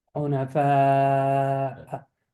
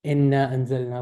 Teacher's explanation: There's a vowel, and after it there's a hamza, so I need to elongate the vowel. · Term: mad